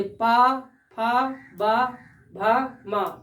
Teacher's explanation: तो हमारे दोनों ओठ क्या है, आपस में स्पर्श करते हैं, तो इसलिए इसका उच्चारण स्थान क्या होगा, ओष्ठ होगा।